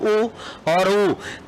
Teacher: वृत्त के समान बिल्कुल बंद सा रहे जिसके उच्चारण में मुख सबसे कम खुले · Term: संवृत